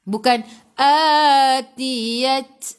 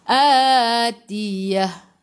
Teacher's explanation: Ta marbutah ni apabila berhenti bacaan kita kena tukar kepada ha. Tak boleh baca ta.